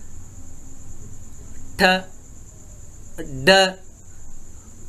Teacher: Tongue touching the alveolar ridge behind the upper teeth.